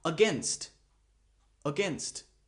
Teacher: The schwa sound is at the beginning